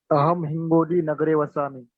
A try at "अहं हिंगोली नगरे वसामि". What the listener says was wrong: समीचीनं, बहु सम्यक्।